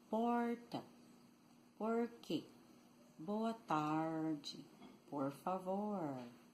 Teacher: The R is called retroflexo, retroflex, caipira or country accent